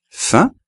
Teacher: como no hay una vocal después pues se pronuncia la nasal